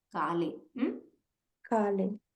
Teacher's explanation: Make sure your ka is simple eva, alpa prana eva